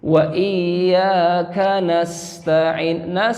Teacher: Terakhir yang saya koreksi itu huruf sin. Nasta'in, huruf sin ini ada sifat tambahan, yaitu as-safir, mengeluarkan suara desis. Ya. Jadi tidak sama dengan huruf S-nya kita.